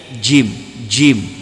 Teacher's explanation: Jim makhrajnya al-lisan. Al-lisan, tengah-tengah lidah naik ke langit-langit. Jim, jim. Jadi ada angin.